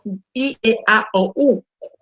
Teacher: La A es una vocal abierta. La E es semicerrada. La I es una vocal cerrada. La O abierta y la U cerrada.